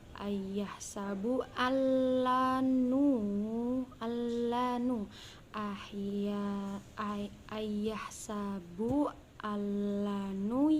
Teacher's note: Ada pula matlin, karena huruf ya sukun didahului oleh huruf lam berharokat fathah, dibaca panjang 2 harokat